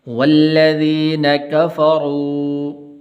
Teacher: واو مدہ ہے اس کو لمبا کرنا ہے اور اس کے اوپر چھوٹی مد بھی ہے